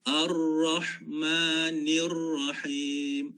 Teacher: Dia ada getaran. Semasa kita letakkan kita punya lidah pada bahagian atas, pada bahagian gusi, tempat tumbuh gigi atas tu, dia ada getaran. Dan ulama tajwid kata biasanya sekali ataupun dua kali getaran.